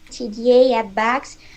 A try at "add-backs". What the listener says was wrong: I would stress add instead of backs.